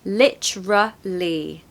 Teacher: you want a schwa in the middle